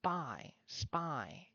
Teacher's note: For spy, you have to say the S, close your mouth for the P to come out. This causes a small pause state in your mouth. Spy, spy. You have to pause, stop yourself, spy, in order to go for it.